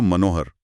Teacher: मनः प्लस हर में ह के प्रभाव से विसर्ग ओ की ध्वनि में बदल जाता है, जिससे शब्द मनोहर बनता है।